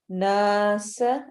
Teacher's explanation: نون کے اوپر غنہ ہے، شد ہے، اس وجہ سے ہم یہاں پر اس کو ناک میں آواز کو لے جا کر پڑھیں گے